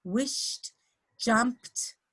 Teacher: so the sh, you actually don't feel a vibration of your vocal cords. And so the following ED will be t, wished, jumped, okay? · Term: unvoiced consonant